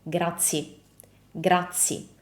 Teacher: So what is the mistake that Brad Pitt is making, is that he drops the ending E totally, completely.